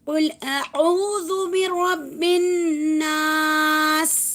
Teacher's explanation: اس کو جو ہے زیر ہٹا دیں گے، اس کا جزم لگائیں گے. برب الناس، اور را کو با سے جب ملائیں گے تو را کو موٹا پڑھنا ہے